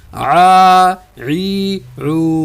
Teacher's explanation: حلق کے درمیان سے اور درمیانی آواز ہے اس کی ادا کریں گے ہم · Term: عین